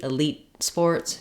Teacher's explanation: So if I'm saying elite sports, I would use an unreleased T, elite sports, because the next word starts with a consonant sound.